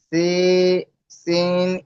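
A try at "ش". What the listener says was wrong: সিন নয়, শিন, একটু মোটা আওয়াজ।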